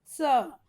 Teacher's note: इसको बोलते हैं दंत सा, इसको बोलते समय हमारे जीभ को दांत से सटा के हम स बोलेंगे।